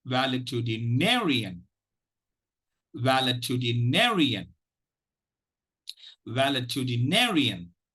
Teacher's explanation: Obviously, there is going to be a secondary stress. Okay, so the primary stress is on the 5th syllable ne.